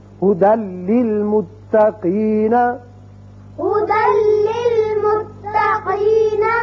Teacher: دال کی ایک زبر لام سے ملے گی اور بغیر غننے کے پڑھا جائے گا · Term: ادغام بغیر غنہ